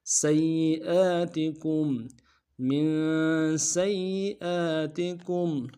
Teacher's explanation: کاف کو میم ساکن کے ساتھ ملانا ہے، میم ساکن میں غنہ کریں گے · سین کی سیٹی باریک ہوگی اور سین کو یا کے ساتھ ملانا ہے ، یا کے اوپر تشدید زور دیں گے، اور اگلے یا